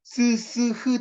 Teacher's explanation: 보세요 스스 흐 등 기류가 좋은 기관에 어느 지점을 지날 때 통로를 아주 좁혀서 기류에 그게 이제 마찰이에요 마찰 마찰로 소리내는 자음 마찰음